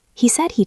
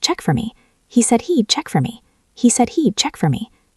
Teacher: Drop the H in he'd.